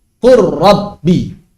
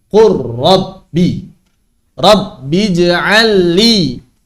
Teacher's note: qul bertemu dengan Rabbi, maka dibaca Qur Rabbi. Langsung lamnya hilang. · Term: idgham kamil